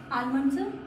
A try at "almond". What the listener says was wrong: almond. अक्सर सुनाओ almond, ऐसे कौन ही बोलता है almond ना बोल के, ऐसे बोलना चाहिए almond, almond, almond. उसमें L silent रहता है, almond बोला जाता है.